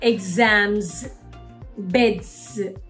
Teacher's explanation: when there is a s after a voiced consonant like m and d it also makes this z sound